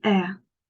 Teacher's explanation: That is also centering diphthong because A is articulated there and the shiva is there. The sound moves from front to the center. It is also opening diphthong because compared to A, we make our oral cavity wider when we articulate the shiva sound.